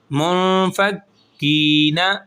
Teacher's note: منفک، کاف زیر یا کی، منفکی، نون زبر نا، منفکینا، اب یہاں پر اخفا ہوگا اور کاف کو تھوڑا سا کھینچ کے پڑھیں گے کیونکہ یا مدہ بن رہا ہے